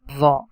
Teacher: Pronunciation of dha is tip of the tongue is touching with the edges of frontal teeth.